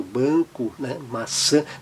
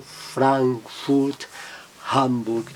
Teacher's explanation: No alemão não, sempre aberto mesmo, seguido da consoante M e N, como está aí na tela a palavra Frankfurt, a cidade alemã, Frankfurt ou Hamburg, seguido de M e N, o A, mas ele mantém um som bem aberto